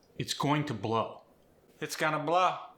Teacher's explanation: The long O goes to ah.